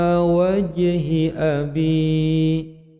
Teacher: Ini qalqalah sughra, wajhi memantul kecil